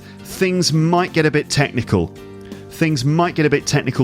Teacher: it sounds like all the words in the phrase run into each other and it just ends up sounding like one single word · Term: connected speech